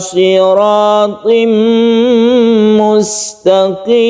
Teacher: tanwin bertemu dengan mim disebut dengan idgham biguna, kita panjangkan. Kemudian di sini ada mad alid lisukun yang panjangnya bisa sampai 3 alif.